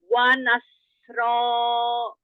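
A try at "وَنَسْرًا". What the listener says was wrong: Ro, jangan yang di hamzah fathah. Wa nasro. Ro. Naikkan suara ke bagian depan karena dia tebal tafhim. Jangan ro, jangan yang di hamzah. Ro.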